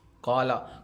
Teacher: قاف کو موٹا پڑھنا ہے